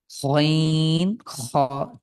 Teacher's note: গইন কণ্ঠের একদম শেষ ভাগ থেকে গইন খ, ঠিক গড়গড়ানি যে ভাব আছে, আমরা সকালে উঠে কুলকুল কুলু যখন কুলকুচি করি ঠিক ওই রকমই গইন খ।